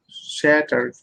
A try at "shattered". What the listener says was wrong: So it's actually a T. You can say shattered. Yeah, shattered. It's between a D and a T. You can say the D.